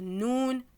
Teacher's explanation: Donc le son va venir, on va sentir que le son vient du nez. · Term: nasillement